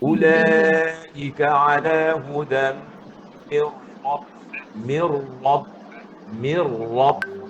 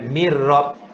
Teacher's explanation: Jadi bila tuan-tuan jumpa mir itu, naikkan pangkal lidah. Ulaika ala hudan mir rabb.